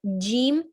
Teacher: for jean the tongue touches on the upper palate and moves away · of the back of the tongue fleshy and bony palette calf middle of the tongue with the middle of the upper palate which is bony palette completely